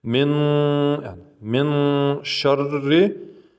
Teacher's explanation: Когда зеленый стоит, говорит нос, долгота произношения два звука. То есть удлиняем нун через нос.